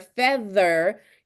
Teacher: But if you say the middle sound in the word feather, you can feel your tongue vibrate a little bit and your vocal box is just kind of shaking a little bit. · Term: voiced